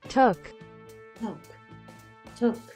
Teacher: Acuérdate que es como entre una O y una U. No es tanto took, es más took.